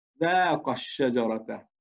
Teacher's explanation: بما أنه الشجرة ساكنة الشين الأولى، لأنه الشين مشددة، أش ش، إذن الشين ساكنة والألف أيضا ساكنة. في هذه الحالة ماذا نفعل؟ نحذف الألف ونقول ذاق الشجرة، تختفي الألف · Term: الحذف